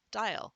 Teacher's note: the A often says the schwa sound in front of a L